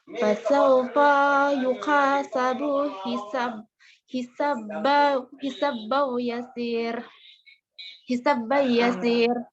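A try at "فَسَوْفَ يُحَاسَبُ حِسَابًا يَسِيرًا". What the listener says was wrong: Yasira. Ra-nya dibaca. Fasawfa yuhasabu hisaban yasira.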